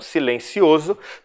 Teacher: Eu tenho o som do Z. Então, o S no meio de palavra tem som de Z quando está entre duas vogais.